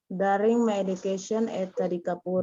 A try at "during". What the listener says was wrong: During, bukan daring.